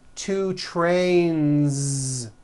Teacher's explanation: Two trains with a voiced Z ending.